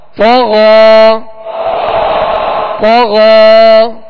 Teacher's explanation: اور آپ یہاں دیکھیں گے کہ غین کے ساتھ یا ہے، یہ یا اس میں پڑھی نہیں جائے گی، بلکہ غین کے اوپر جو کھڑا زبر ہے یہ الف مدہ کے قائم مقام ہے، لہذا یہاں غین کے اوپر کھڑا زبر پڑھیں گے اور ایک الف کی مقدار کھینچ کر ادا کریں گے